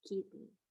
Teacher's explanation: you have the glottal stop in kitten